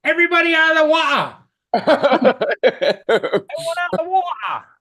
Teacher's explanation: when you say water with the silent T, as it's being called now in this chat, that's called a glottal stop